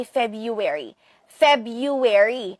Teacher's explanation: Pareha sila sa British English na ang stress ay nasa first syllable.